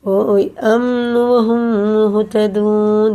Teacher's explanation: میم ساکن کا بعد میم آ رہا ہے تو اس کو یہ ادغام شفی ہے, غنہ کر کے پڑھیں گے